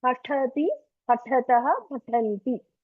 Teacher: but ta should have air in that